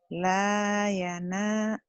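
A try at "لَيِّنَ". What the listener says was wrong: Barisnya di bawah, Bu. Suka ketukar.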